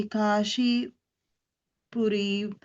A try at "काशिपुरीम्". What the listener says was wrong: And the Kashi is a short E, okay? Kashi Purim Adhakshit.